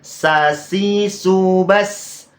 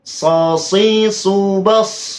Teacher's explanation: huruf sin itu memiliki sifat istifal, merendah, sasi subas. Sedangkan huruf sod, sosi subas, dibaca tebal. · huruf sod memiliki sifat idbaq, artinya menempel. Lidahnya itu loh, menempel ke atas. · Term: sifat isti'la